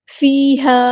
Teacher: یا مدہ یہ 2 کاؤنٹ لمبا کریں گے، ہا سمپل پڑھیں گے